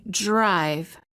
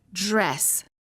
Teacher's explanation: D plus R sounds almost like dr sound. When the D is followed by an R, the D changes and becomes an almost j.